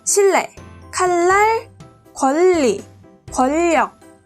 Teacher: 유음의 영향으로 니은이 리을로 바뀐 겁니다. 따라서 유음이 아닌 니은이 유음인 리을로 교체됐기 때문에 얘네는 유음화라고 부릅니다.